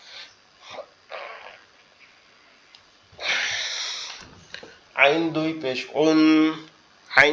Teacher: কন্ঠনালীর মধ্যকান অর্থাৎ গলার মধ্যকান এই আইনটা ওইখান থেকে উচ্চারিত হবে